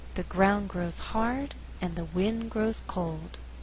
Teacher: in this faster reading only four content words are being stressed ground hard wind cold the resulting rhythm is 1 and 2 three and four d